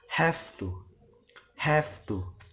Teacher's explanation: the word have has F sound rather than V sound as the fricative voice is followed by voiceless consonant so how